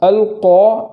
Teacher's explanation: اور اسی کے بعد جو قاف ہے اس قاف کو قاریہ نہیں پڑھیں گے بلکہ قاریہ اس طریقے سے پڑھیں گے، پور کرنے میں اور کوئی چیز کا سہارا لیے بغیر موٹی آواز سے پڑھیں گے، یعنی ہونٹ بھی گول نہیں کرنا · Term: بڑی قاف